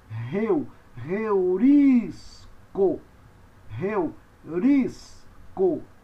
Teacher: Com a aspiração áspera tem som de R ou do H em inglês